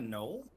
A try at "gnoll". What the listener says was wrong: It's a gnoll. Pronounce the G. It's a gnoll. It's Gnoll. Gnoll.